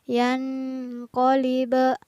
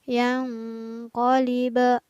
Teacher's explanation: Nah, di sini pada lafaz yang qaliba berlaku kembali hukum bacaan ikhfa. Ada nun sukun yang bertemu dengan huruf qaf, maka nun sukunnya dibaca samar. Kurang tepat jika kita membaca yan qaliba karena nun sukunnya tidak boleh dibaca jelas.